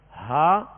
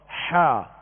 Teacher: ہا جو ہے وہ ابتدائی حلق سے، اور حا جو ہے درمیانی حلق سے ادا ہوتا ہے. اور ان میں فرق جو ہے یہی ہے جو آپ آواز کو محسوس کر رہے ہیں، ہا اور حا، ہا حا.